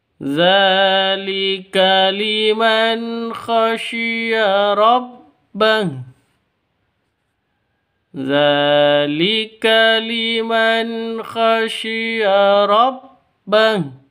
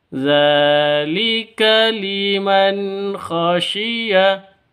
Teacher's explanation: Zalika, za di sini panjang. Dibaca panjang 2 ketukan karena ada tanda berdiri atau ada harokat berdiri di atasnya zal seperti alif. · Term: Mad asli